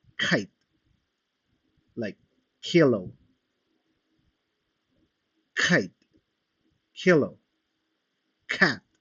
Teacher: Estos se producen cuando la parte posterior de la lengua entra en contacto con el velo del paladar. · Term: sonidos velares